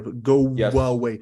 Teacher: Go away. So you got go, your lips are rounded, right? Very rounded. And then for you to move from rounded lips in U to the open away, your mouth will away. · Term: intrusive w